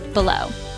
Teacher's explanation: 2 syllables. Stress on second syllable.